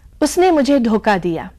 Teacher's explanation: ख की जगह क का उच्चारण हो गया, क्योंकि ख के पास की अल्प प्राण ध्वनि है क, और इसीलिए धोखा धोखा में बदल जाता है।